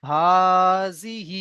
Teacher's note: খাড়া জেরটি হলো ইয়া মাদ্দার সমতুল্য। একেও এক আলিফ পরিমাণ টান দিয়ে পড়তে হবে।